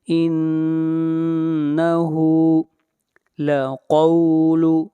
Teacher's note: انہو، انہو، نون کے اوپر شد ہے، غنہ ہوگا اور ہا کو کھینچ کر پڑھیں گے 1 الف کے برابر، ہا کے اوپر الٹا پیش ہے۔ انہو لقول، قاف کو موٹا پڑھیں گے، قاف حروف مستعلیہ میں سے ہے